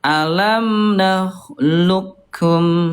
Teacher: Jadi langsung ke kaf, ini idghamnya idgham kamil, sempurna. Betul-betul huruf qafnya nggak muncul.